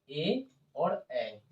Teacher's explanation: आप कंठ से तालु, कंठ और तालु, कंठ और तालु से आपका बोलाएगा ए और ए